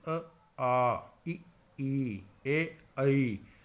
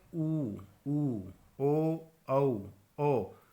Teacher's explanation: आपके होंठ जो होते हैं पूरी तरह से गोल हो जाते हैं। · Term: व्रतमुखी